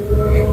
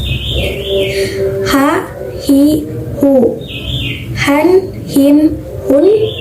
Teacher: di mana keluarnya dari tenggorokan bawah di pangkal tenggorokan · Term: huruf ha besar